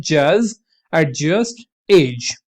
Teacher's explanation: ये ज जो होता है डी और जेड, ड और ज की साउंड को मिलके बना होता है तो इसीलिए इसको ज बोलते हैं, जज, एडजस्ट, एज, राइट। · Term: एफ्रिकेट्स